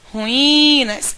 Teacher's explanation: em ruínas o i é a sílaba mais prolongada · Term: sílaba tônica